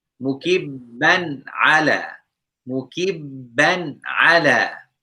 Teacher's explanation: Tanween means double fatha, double kasra, or double dhamma. So here we have tanween fatha followed by one of the throat letters, which is ain. So we need to make this noon clear.